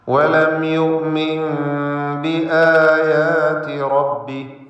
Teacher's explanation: വലം യുഅ്മിൻ ബിആയാതി റബ്ബി യുഅ്മിൻ എന്നതിലെ സാക്കിനത്തായ നൂനിനെ ഇഖ്ലാബ് ചെയ്ത് മീമാക്കി മാറ്റി മണിക്കണം.